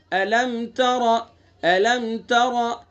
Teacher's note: را کو پر پڑھیں گے، چونکہ را کے اوپر زبر ہے